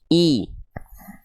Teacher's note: Vokal i-nya jelas. Angkat tengah lidah ke arah langit-langit ketika momentum vokal i-nya teman-teman lafalkan